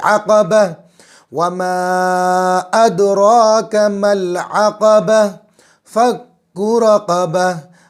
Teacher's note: आगे आयत आ गई तो गोलता जो है ये रुकते वक्त जज़म वाली हा बन जाएगी